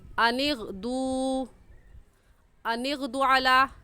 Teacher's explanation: اس واو مدہ ہونے کی وجہ سے اس دال واو پیش دو کو کھینچیں گے اور ایسے کہیں گے ان اغدوا، ان اغدوا علی، بغیر کھینچ سے پڑھنا غلط ہو جائے گا۔